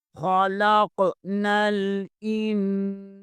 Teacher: خلاق نل، حمزہ زیر کو نون کے ساتھ ملائیں گے، یہاں نون ساکن ہے، یہاں نون ساکن کے آگے سین حروف اخفا میں سے آ رہا ہے، یہاں اخفا ہوگا۔ این، سین زبر کے آگے الف مدہ ہے، اسے ایک الف کے برابر کھینچیں گے۔